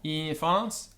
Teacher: NF, NS, infans. Notice the vowel before the NF is long